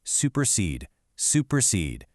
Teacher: the anapest, two unaccented followed by one accented